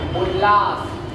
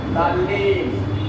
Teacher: यदि त के बाद ल आता है तो त का भी ल हो जाता है